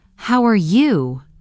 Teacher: Rising tone on you, it sounds warm and natural.